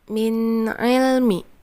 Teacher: Izhar halki yang artinya jelas dan keluar dari tenggorokan.